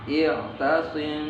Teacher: Cara membacanya adalah harus dengan dengung sepanjang 2 harokat. Dengung yang dibaca samar, ya. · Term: ikhfa syafawi